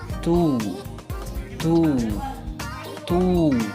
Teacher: suara yang dihasilkan dari mengarahkan lidah ke atas langit-langit yang keras